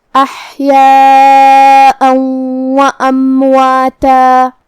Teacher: واو حروف الادغام بغنہ میں سے ہے اور ادغام کا معنی ہے حرف کو حرف میں داخل کرنا، لہذا ہم یہ تنوین کو واو میں ملا کے غنہ اور تشدید کے ساتھ یہ حکم کو ادا کریں گے